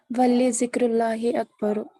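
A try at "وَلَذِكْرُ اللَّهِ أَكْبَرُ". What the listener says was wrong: لام زبر لا ہوتا ہے، اس پہ ہاں، اس پہ کسرہ نہیں ہوتا، اس پہ ہمیشہ فتحہ ہی ہوگا.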